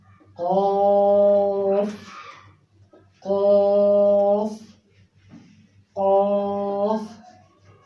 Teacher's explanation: कौफ अदा हो रहा है ज़बान की जड़ और कौवे से। ज़बान की जड़ और कौवे से।